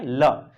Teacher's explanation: जब हमने ल को उच्चारित किया तो प्राणवायु जीभ के किनारे से, बगल से निकल गई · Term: पार्श्विक व्यंजन